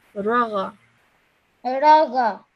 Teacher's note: when you read the ra, just do it for 1 second. Don't stretch it for longer than 1 second